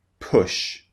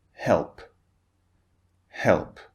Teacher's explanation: when it's at the beginning it's more forceful push push when it's at the end it's slightly less forceful